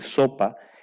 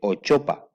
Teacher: Por ejemplo, si se quiere decir sopa y se dice ochopa, colocándose la lengua en posición intermedia entre la S y la OH, no articulando nítidamente ni uno ni el otro. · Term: alteración o deformación